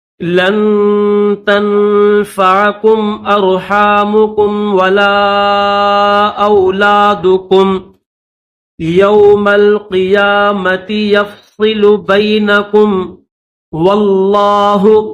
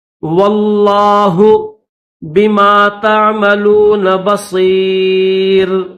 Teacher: واو کو لفظ اللہ کے لام کے ساتھ ملا کر پڑھیں گے اور لفظ اللہ کو موٹا کریں گے، واللہ بما تعملون بصیر.